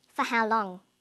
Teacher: this is a question too but it has a falling tone a falling tone is used with information questions they're questions that